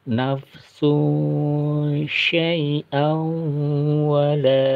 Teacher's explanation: Tanwin bertemu wawu, masuk dalam huruf wawu sesuai dengan guna ya. Keluarannya udara dari hidung dan mulut. Fal yauma la tudlamu nafsun syai'a, terasa ya ada udara yang menyebar ke mulut kita. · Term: idgham biguna